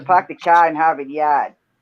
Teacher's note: we don't pronounce our r's